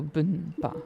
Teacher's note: it sounds like you're pronouncing the M, like bumpa, but it actually is the N, so bumpa. But you pronounce it almost like an M, bumpa.